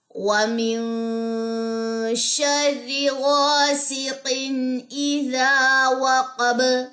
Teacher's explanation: انشاءاللہ تعالی زبر زیر پیش میں آپ اس رول کو سمجھ لیں گے، لیکن فی الوقت کے لیے جو ہے اس کو سمجھ لیجئے کہ با کے اوپر کی زبر جو ہے وہ ڈراپ ہوگی وقف کی صورت میں اور اس پہ جزم آ جائے گی، اور با جزم جو ہے وہ قلقلہ لیتا ہے